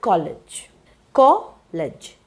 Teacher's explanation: So the word college, college. So you have 2 syllables, it's a noun. So you must stress C-O, and ledge will be unstressed or unaccented.